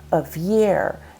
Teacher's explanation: time is stressed that time of year year is stressed so it's almost as if the first syllable in an iambic pentameter rhythm poem is swallowed and then the second syllable is emphasized